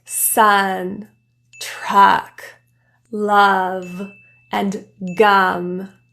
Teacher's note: The tongue, it's in the middle of the mouth in a really relaxed position.